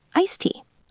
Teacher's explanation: Tea starts with T. We do not say iced tea. We drop the D completely.